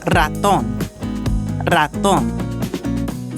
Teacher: You will also roll the R at the beginning of a word.